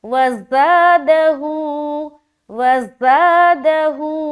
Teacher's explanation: ज़ा में खींचेंगे एक अलिफ और हू में खींचेंगे एक अलिफ